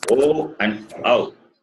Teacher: the place of pronunciation is guttural plus labial. The sound comes from the throat and ends with the lips.